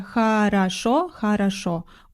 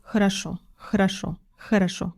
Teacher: Это звук шва, да, между х и р.